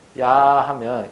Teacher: 그러면 야는 뒤에 아라고 발음을 하는데 앞에가 뭐가 있냐면 이라는 게 하나가 더 들어가요. 다만 이는 아주 짧게 발음하고 아를 길게 발음하죠. · 그러면 야라고 하는 모음에는 아가 들어있다는 얘기죠. 그러면 야는 뒤에 아라고 발음을 하는데 앞에가 뭐가 있냐면 이라는 게 하나가 더 들어가요. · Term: 이중모음